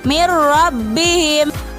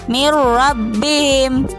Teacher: nun mati bertemu dengan huruf ro, maka nun tersebut dimasukkan ke dalam huruf ro, maka dibacanya mir rabbihim. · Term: idgham bila gunnah